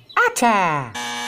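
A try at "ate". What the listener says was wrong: Atta? No. The E is silent. Yeah, it doesn't make any sound. And if there's a silent E at the end of the word, that changes the vowel's sound. So it becomes A.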